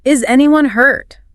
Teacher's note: Rising tone, showing concern.